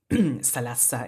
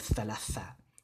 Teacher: the tha gets changed to a sa, so we get salasa instead of thalatha